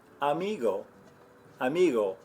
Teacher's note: you're making a little bit of a closure in the back of your throat it's almost like you're about to make the G sound without all the friction that we have in English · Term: soft gargle